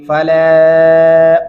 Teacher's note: فلا لام کے اوپر دو الف مدہ ہے، اس کو دو الف کے برابر تک لمبا کرتے رہیں گے